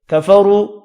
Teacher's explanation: کفروا را کو پیش کی وجہ سے پر پڑھنا ہے، واو مدہ کو 1 الف کی مقدار میں کھینچ کر پڑھیں گے۔